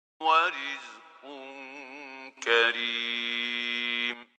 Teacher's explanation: We noticed that the ra itself has a kasra, and in that case, it has to be attenuated. It has to have tarqiq.